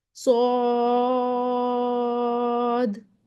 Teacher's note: ہوگی، یاسین۔ آگے آ جاتے ہیں سواد، سواد 3 حرفی ہے، محل الف مدہ ہے اور جو سبب ہے وہ سکون ہے، مد لازم حرفی مخفف ، یہ بن گئی صاد، 6 کاؤنٹس دیے۔ آگے آ جاتے